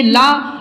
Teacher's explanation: ला और लरी दोनों आपके दंत से उच्चारण होते हैं।